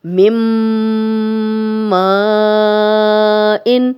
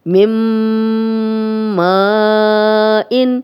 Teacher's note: یہ میم اور میم مل رہے ہیں، ادغام ہو رہا ہے، یہ دونوں آپس میں مل رہے ہیں ، ملانا ہوتا ہے ادغام کا مطلب، تو یہ ملا رہے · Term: ادغام بالغنہ